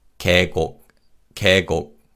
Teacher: when we pronounce this word, the vowel 예 in the first syllable weakens